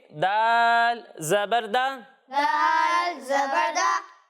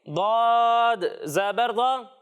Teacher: एक हर्फ है दाल और दूसरा हर्फ है दौद। जब हम दाल की अदायगी करेंगे तो इसे बारीक पढ़ेंगे, और जब हम दौद की अदायगी करेंगे तो इसे मोटा करके पढ़ेंगे।